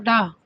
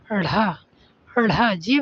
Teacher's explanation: जीभ उलट जाते डा जीभ उलट कर वायु बाहर फेंकती है। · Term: उत्क्षिप्त व्यंजन